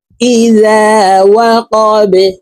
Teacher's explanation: বা কলকলার হরফ নিচের দিকে ধাবিত করে ধাক্কা দিয়ে উচ্চারণ করে এই বাকে সাকিন করে ফেলব।